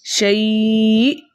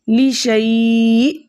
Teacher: 2 حرکت کی مقدار کھینچ کر پڑھا حالت وقف میں۔ حالت وقف میں یائی لین کے بعد حمزہ کا سکون عارضی وقف کی صورت میں آ رہا ہے، اس لیے یہاں پر مد بنے گی مد عارض لین للسکون، اسے ہم 2 حرکت کی مقدار کھینچ کر پڑھیں گے۔